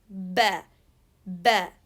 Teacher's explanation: Shidda, ba. The two lips cutting the sound, and that's why it's called shidda.